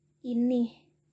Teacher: penambahan fonem H di akhir kata